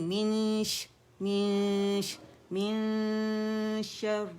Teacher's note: جب حرف اخفا دیکھیں گے فوراً رائٹ اوے غنہ کرتے ہوئے شین کے مخرج کے قریب جائیں گے, رائٹ اوے. ٹھیک ہے, غنہ کرتے ہوئے, اور پھر شین جب اخفا کمپلیٹ ہو جائے گا, شین کو ادا کریں گے, اس سے پہلے کی حرکت بھی بعد کی حرکت بھی, اور پھر ہم اس کے بعد آگے چلیں گے.